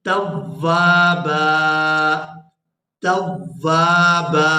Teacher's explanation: اور اگر یہاں پر ہم کریں گے وقف، اب گول دائرہ آ گیا ہے، آیت ختم ہو رہی ہے، تو جب بھی ہم نے قرآن مجید کے اندر اس طرح وقف کرنا ہے آیت کے آخر میں، تنوین ہو 2 زبر کے ساتھ، تو وہاں 1 زبر پڑھی جاتی ہے. وقف کی صورت میں ہم با کے اوپر 1 زبر پڑھیں گے